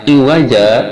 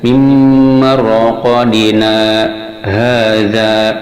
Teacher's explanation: saktah ialah berhenti sejenak tanpa bernapas